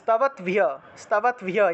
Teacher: যদি আমরা ভাঙি তাহলে হসন্তযুক্ত একটা দ পাবো, একটা ভ পাবো, তাই হসন্তযুক্ত দটা তাৎ হিসেবে উচ্চারিত হয়